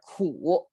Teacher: you have to pronounce it with a downturn and upturn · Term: the third sound